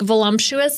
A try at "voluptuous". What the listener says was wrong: I love how you add an M to that word. Voluptuous. It's volump. There's no M.